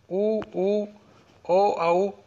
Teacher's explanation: वृत्ताकार में होठ गोलाकार हो जाते हैं